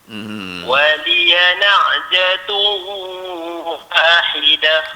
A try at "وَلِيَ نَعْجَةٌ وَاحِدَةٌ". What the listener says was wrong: Jadi tu tak mau sengau. Dia tak mau jadi sengau. Waliya na'jatun wahidah.